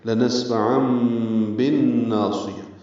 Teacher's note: با کو نون سے ملا دیں گے، ادغام شمسی ہوگا، الف لام نہیں پڑھیں گے، غنہ بھی ہوگا.